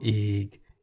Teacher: That is the Thai consonant Go Gai, which we can summarize as a consonant that sounds like the G in the word get at the beginning and end of a syllable. As it is a stop final consonant, Go Gai often sounds like a K at the end of a syllable.